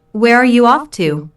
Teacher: notice the falling intonation since this is an information question not a yes slash no question